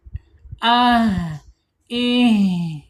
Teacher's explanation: Kemudian secara sifat H ini mempunyai sifat hames. Alirkan napas kita, alirkan udaranya ketika H ini sukun.